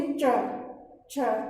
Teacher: अपन च बोलेंगे तो च बोलते वक्त हमारी जो जिह्वा है वो हमारे मुख की छत को, मतलब हमारे तालु वाले भाग को स्पर्श करती है।